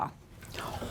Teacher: sort of like an ah sound you make when the doctor tells you to stick out your tongue and go ah but further back in the throat this sound does not have an actual English equivalent but in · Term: guttural sound